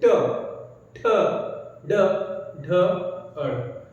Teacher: तो इसमें हो क्या रहा है कि जिह्वा जो है ऊपर से टक्कर मारते हुए आगे आ रही है, और कहां पे, दांत के जस्ट पीछे, ट ठ ड ढ अड़। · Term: मूर्धा